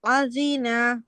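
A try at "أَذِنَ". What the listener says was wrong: আলিনা, হামজা হামজা আইনের মতো হয়ে গেছে।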